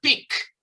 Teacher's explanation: Ese último sonido de la K. Pick. ¿Ok? Ahí no hay vibración.